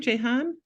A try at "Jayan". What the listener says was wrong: Jayan, the H is silent. Yes, it's like it's stop like Jayann.